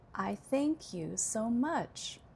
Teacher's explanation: So you can hear that the most prominent word is much, and then I also gave secondary stress to think.